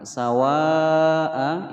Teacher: Dhalla sawa'a ada mad tabi'i bertemu dengan hamzah dalam satu kalimat. Sawa'a ini satu kalimat, dia dibaca panjang selama 5 ketukan, hukum bacaan mad wajib muttasil.